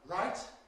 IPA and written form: raɪt (right)